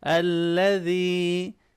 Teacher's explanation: ذال کو نرمی سے پڑھیں گے، یا مدہ ہے اس کو تھوڑا سا کھینچ کے پڑھیں گے